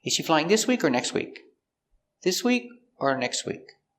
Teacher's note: This is an information question with two options using or. So the intonation goes up before or and down at the end.